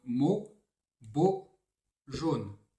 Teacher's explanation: AU, en général, non, tout le temps doit se prononcer fermé, sauf dans le prénom Paul, et rose se lit fermé aussi, pour d'autres raisons, pour la combinaison OSE.